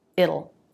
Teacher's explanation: the dark L, which I would write schwa L, makes the T a flap T.